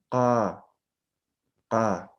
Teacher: postvelares, ese es el secreto, pronuncian desde la garganta